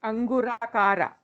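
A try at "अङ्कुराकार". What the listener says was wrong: No, Ankurakara, ka in both places. Suddha Vidyang Kurakara. Shuddha Vidyang Kurakara Dvija Pankti Dvayojvala Karpura Vitika Moda Samakarshad Digantara.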